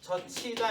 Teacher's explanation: 이게 지읒, 히읗이 만나서 치읒 되는 거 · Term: 자음 축약